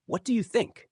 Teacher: When you ask a question like, "What do you think?" Let your voice rise slightly at the end. That rising tone communicates curiosity and openness.